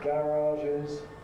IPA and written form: ˈgærɑːʒɪz (garages)